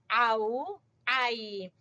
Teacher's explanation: عین کو وسط حلق سے بولیں گے